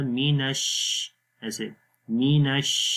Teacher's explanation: شین کی آواز منہ کے اندر پھیل جائے گی، پھیل کر آواز آئے گی منہ کے اندر · میم کے نیچے زیر ہے، می باریک آواز آئے گی، نون کو شین کے ساتھ ملائیں گے ، نش، شین کی آواز منہ کے اندر پھیل جائے گی،